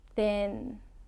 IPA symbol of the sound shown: n